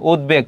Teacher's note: উদ উপসর্গের সঙ্গে ব থাকলে ব উচ্চারিত হয়।